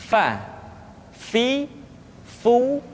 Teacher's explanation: diucapkan dengan menyentuhkan ujung dua gigi seri kita bagian atas dengan bibir bawah bagian dalam seperti kita mengucapkan huruf F di dalam huruf latin Fa fi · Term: huruf Fa